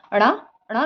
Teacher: ये मूर्धन्य उच्छिप्त ध्वनियां हैं।